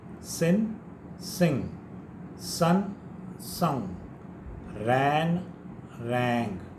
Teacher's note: In the spelling, g is there, but there is no g sound. Don't say sing.